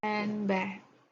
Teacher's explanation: most American English speakers do not pronounce the D in handbag